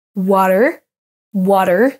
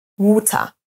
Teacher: ça c'est plutôt la prononciation américaine on va rouler le r à la fin du mot alors qu'à la britannique en fait on l'entend même pas wat